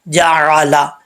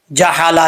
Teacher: کچھ لوگوں کو یہ غلط فہمی ہوتی ہے کہ عین کو ہا پڑھ دیتے ہیں